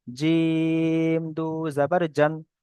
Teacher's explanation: জিমটা তিন আলিফ পরিমাণ টান